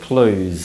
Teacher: simply remove the v sound and pronounce it close instead